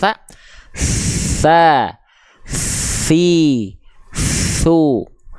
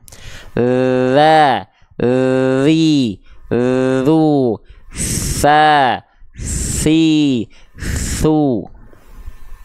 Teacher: ya Dari mana teman-teman sekalian dari mana Dari W waluil thaia dari ujung lidah disentuhkan ke ujung gigi seri atas